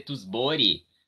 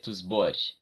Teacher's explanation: a consoante que precede o I final em romeno, nunca ela é muito pronunciada. Ela é palatizada. Então, em vez de dizer tusbori, a gente tem que dizer tusbor.